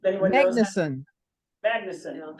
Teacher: emphasize the first syllable in Icelandic